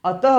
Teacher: टी के बाद हा जैसी ध्वनि निकाल रही है तो समझ लीजिए यह विसर्ग है विसर्ग आप समझ चुके हैं